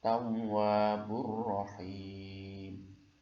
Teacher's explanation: tanwin bertemu dengan huruf ro, ini adalah idgham bila gunnah